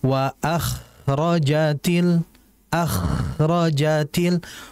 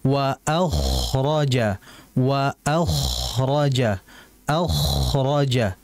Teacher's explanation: ya kemudian kedua wa aktil ardu atqaha hati-hati pada huruf k huruf k ini merupakan harfun mufakham huruf yang tebal dengan mengangkat pangkal lidah jadi jangan dibaca waakh til akjatil makhrajnya dapat tapi sifatnya kurang